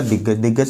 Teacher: यानी का गा में परिवर्तित हो जाएगा